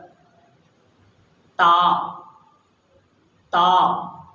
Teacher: تا کی ادائیگی کے لیے ہمیں زبان کی نوک یہ دانتوں کی جڑ میں لگانی پڑے گی اندر، تا تا۔